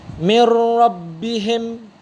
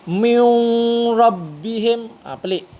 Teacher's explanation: Apabila huruf nun bertemu dengan huruf ra, dia memang tak boleh nak dengung. Kalau dengung dia jadi pelik. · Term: tanpa dengung